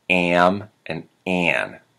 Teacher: of accents in the United States the a n a.m. becomes a very nasal and almost two syllable